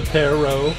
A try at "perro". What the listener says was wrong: There's two R's. That means you gotta roll. Do it.